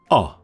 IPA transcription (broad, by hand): ɒ